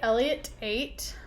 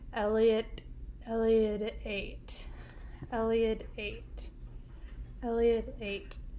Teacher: i'm taking out that hard t and adding a d in there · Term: soft d